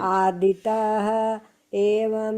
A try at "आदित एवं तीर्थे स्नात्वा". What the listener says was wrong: विसर्ग मत लगाइए. विसर्ग मत लगाइए. आदित है.